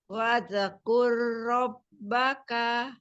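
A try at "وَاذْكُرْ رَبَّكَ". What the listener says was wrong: Bagus, tapi zalnya jangan mantul ya dialirkan aja. Wadzkur rabbaka. Nah, jangan waza tapi wadzkur rabbaka.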